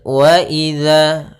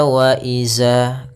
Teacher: Pada lafal wa idza, hati-hati dalam melafalkan zalnya, jangan dibaca wa iza. Ini kesalahan yang sering terjadi, yaitu mengganti huruf zal dengan huruf zai.